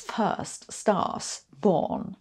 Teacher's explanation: In British English, none of those has an r, so it’s first stars born.